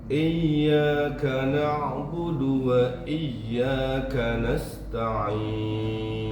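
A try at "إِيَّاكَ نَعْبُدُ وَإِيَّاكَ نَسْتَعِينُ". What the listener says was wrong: K-nya lebih kecil desisnya. K biasanya. Kecil lagi. Jangan terlalu ditekan, kalau ditekan ka jadinya.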